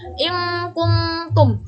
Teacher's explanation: In kuntum, hukumnya ifa karena huruf nun sukun bertemu huruf kaf. Cara membacanya sama dengan dengung, pengucapannya nun sukun menjadi seperti eng.